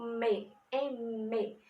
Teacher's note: No M, o E começa sendo um vocálico, porém vem o me, me. Temos um pequeno obstáculo também, porque encostamos os lábios e fica bilabial